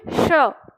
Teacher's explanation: सबसे पहले आप इस एस का उच्चारण करो लेकिन दांत से नहीं तालु से करना है आपकी जीव ने तालु के नीचे होनी चाहिए श तो आप